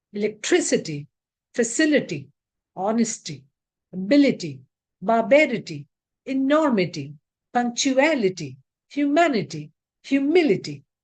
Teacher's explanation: The syllable which occurs before ITY takes the stress. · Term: stress pattern